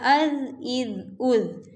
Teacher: اب یہ جو زال ہے اس کو نہ تو ہم سیٹی والا بنائیں گے اور نہ ہی اس کو موٹا کریں گے، بلکہ نرمی سے اس کو پڑھا جائے گا